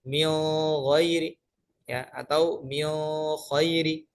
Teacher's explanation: beliau membaca nun sukun dan tanwin saat bertemu dengan huruf kha dan ghain dibaca ikhfa, dibaca samar